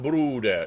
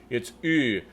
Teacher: It's a round lips like an U, but then you're saying an E through it.